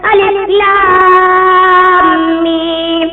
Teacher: مد لازم حرفی مزقل جب حرف مدہ کے بعد سکون لازم حروف مقطعات میں تشدید کے ساتھ ہو تو وہاں پر مد لازم حرفی مزقل ہوگا اور 5 الف کے برابر کھینچ کر پڑھا جائے گا. جیسے الف لام میم اس کو مد لازم حرف مزقل کہتے ہیں.